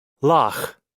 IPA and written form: lɑx (Loch)